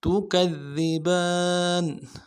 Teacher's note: تا کو نرم سے ادا کرنا ہے، کاف کو ذال کے ساتھ ملانا ہے، ذال کو باریک ادا کریں گے، ذال کے اوپر تشدید ہے، زور دیں گے، اگلے ذال کو نرم سے ادا کریں۔